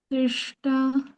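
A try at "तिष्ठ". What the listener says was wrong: తిష్ఠ ఠ ఠ. హా సౌండ్ బయటికి రావాలి. హా ఇలా.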